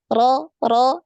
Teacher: tetap ke depan ya ujung lidahnya tetap ke depan nempelnya di mana digusi ya